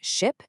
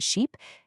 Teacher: The whole secret behind that massive difference between ship and sheep, it's just a single phoneme change. We're swapping out the short high front vowel i for the long high front vowel e. That's the entire trick.